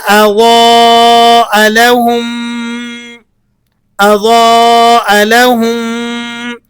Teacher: آپ نے میم ساکن کو میم مشدد میں ملا کر ایک لمبی سی میم کر کے پڑھنا ہوتا ہے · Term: ادغام شفوی